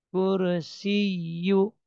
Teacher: Ya tasdid hanya ditekan enggak dibaca panjang enggak ditahan